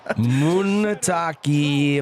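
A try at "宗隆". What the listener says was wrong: Not Taki, it's Munetaka.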